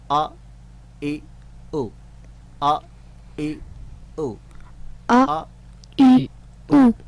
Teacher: حمزہ کی آواز کو ہم پریکٹس میں لا رہے ہیں, جس کا تعلق اقصی حلق سے ہے